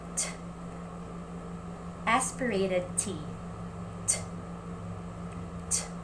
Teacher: yung tip ng ating tongue ay nagpe-press firmly sa ating alveolar ridge.